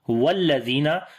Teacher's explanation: جب الذین کو واو کے ساتھ ملائیں گے تو الف بیچ میں سے حذف ہو جائے گا، سکپ ہو جائے گا، تو ہم یہاں پر والذین نہیں پڑھیں گے بلکہ واو کو لام کے ساتھ ملائیں گے، کیونکہ بیچ میں سے الف گر گیا ہے اور یہ حمزۃ الوصل کی نشانی ہے۔